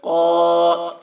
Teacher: قا، الف سے پہلے زبر ہے، الف مدہ ہوا، اس لیے الف مدہ کو ایک الف کے برابر کھینچ کر پڑھیں گے